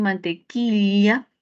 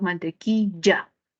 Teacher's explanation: el yeismo que se da mucho en la costa